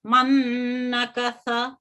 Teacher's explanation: नून साकिन की आवाज दूसरे नून में मदगाम हो जाती है, और उसकी वजह से ये हम पहले भी जान चुके हैं कि वो दूसरा जो हर्फ है वो मुशद्दद हो जाता है। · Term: इदगाम